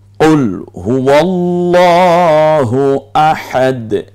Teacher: এই হাটা কণ্ঠনালীতে চাপ দিয়ে ঠিক কণ্ঠনালীর মাঝখান থেকে উচ্চারিত হয়, আওসাত হলক বলে এটাকে।